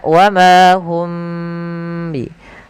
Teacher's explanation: Maka ini cara membacanya, yaitu suara mimnya ditahan, jangan langsung dilepas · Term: ikhfa syafawi